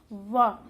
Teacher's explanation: और वा का उच्चारण स्थान दंतोष्ठ है, क्योंकि जब हम इसका उच्चारण करते हैं तो वा जब हम बोलते हैं तो हमारे जो होंठ है नीचे से ऊपर की तरफ जाता है और दांत से लग करके तब इसका उच्चारण होता है